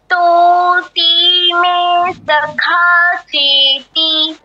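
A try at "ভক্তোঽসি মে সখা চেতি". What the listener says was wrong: কারণ তুমি সি তে হোল্ড করেছ সি তে দীর্ঘ হবে না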